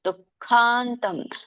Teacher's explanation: ದೊಡ್ಡ ಖ ಇದೆ ಮಹಾ ಮಹಾಪ್ರಾಣ ಇದೆ